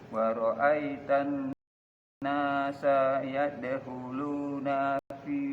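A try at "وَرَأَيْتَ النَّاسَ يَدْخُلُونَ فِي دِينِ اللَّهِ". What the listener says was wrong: Nah, nggak usah ditahan ya. Wa ra'aitan nasa yadkhuluna fi.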